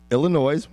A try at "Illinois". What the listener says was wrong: Don't pronounce the S.